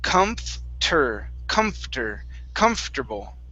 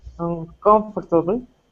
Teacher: the o r after the f is not pronounced